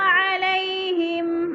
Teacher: یا لین کھینچنا بھی نہیں ہے، لمبا بھی نہیں کرنا